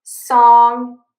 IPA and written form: sɔŋ (song)